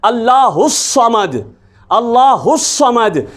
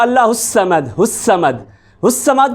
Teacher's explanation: سین اور صاد میں یہی فرق ہے، دونوں میں اگرچہ وہ زبان ایک جگہ پہ لگتی ہے، دونوں میں سیٹی کی نما آواز بھی آتی ہے، چونکہ ہوا ہم فل زور سے باہر نکالتے ہیں، منہ کی ہوا جو ہے، اور فرق صرف اتنا ہے کہ صاد میں آپ نے اس کو موٹا کر کے پڑھنا ہے، پر کر کے پڑھنا ہے